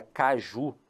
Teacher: ele percebeu que a última sílaba O Ju era a sílaba forte